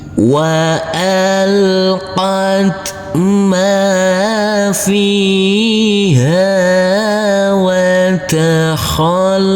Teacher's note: Huruf lam kita tekan dan kita tahan saja dengan 2 harokat. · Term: tasydid